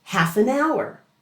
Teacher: The F at the end of half blends right into an, and hour has a silent H at the beginning.